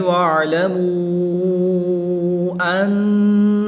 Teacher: واو مدہ کے بعد حمزہ دوسرے کلمے میں ہے تو یہاں پر مد منفصل ہوگی، 2 سے 3 الف تک کھینچ کر پڑھیں گے